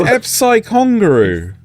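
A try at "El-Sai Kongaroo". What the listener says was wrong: El-Sai. That's an L, E-L, Sai. No, that says it right there. E-L. El-Sai.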